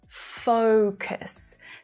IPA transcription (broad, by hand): 'fəʊkəs